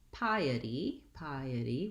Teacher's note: we have three syllables in piety and we have first syllable stress so the pie syllable is dressed it's just like the word